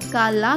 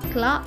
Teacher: C L యొక్క శబ్దం క ల కాకుండా క్ల అవుతుంది